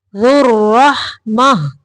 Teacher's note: واو ہے اس کو پڑھنا نہیں ہے، ذو نہیں پڑھنا ہے، ذال کو را کے اندر ملانا ہے